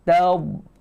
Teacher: Hujung lidah lekat dekat gigi depan tu. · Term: huruf dha